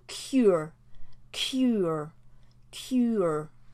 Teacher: we have to have that slight up sound to get us from that you to the R sound and again it's another schwa that we're making so cure cure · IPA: /kjʊə/